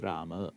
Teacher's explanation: The visarga drops and it's just Rama, not Rama. Moving on to Pustakam, we're going to see that it differs from the masculine only in the first case and the second case, the nominative and accusative.